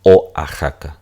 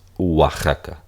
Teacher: en realidad se pronuncia Wa Como si fuese una u deslizada